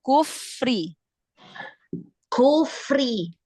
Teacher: jadi bukan kunya yang dialirkan ya, bukan yang diayun bukan kunya, tapi fa-nya yang dialirkan hamasnya.